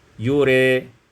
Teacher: dibaca imalah fathah ra dan alif menjadi yure